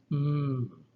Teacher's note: The letter Mi is called a labial nasal because what you do is you stop the air at the lips, you press your lips together, but you allow the air to flow through the nose, the nasal cavity.